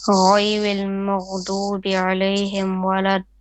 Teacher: Make your da on the mud here, it's called mud lazim, a bit longer. So it's about 6 beats.